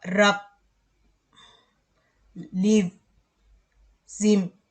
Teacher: Kalau voiced sound itu agak bergetar berat gitu ujungnya